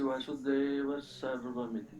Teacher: So Visarga is not there, we are converting to Sa then.